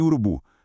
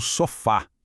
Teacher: Primeiro tipo de palavra, as oxítonas. A força da palavra, entonação, tá lá no finalzinho.